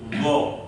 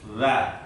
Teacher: Itu yang lidah yang tengah itu juga ikut naik atas. Tapi kalau za kan enggak, hanya ujungnya saja. Za. Tapi kalau go ikut ngangkat semua.